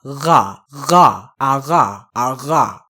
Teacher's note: So the very back of the tongue is going to go press up against the uvula and constrict the air. Not completely stop it, but constrict the air going around there, creating hissing noise while the vocal box vibrates. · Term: French R